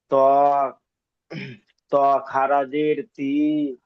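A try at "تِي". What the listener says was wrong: আরেকটু আরেকটু টানেন, টান একটু কম হচ্ছে, টান একটু কম হচ্ছে।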